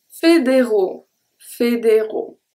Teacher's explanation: AU at the end is an open O. There is nothing that comes and close the sound. Fédéraux, O, soft O.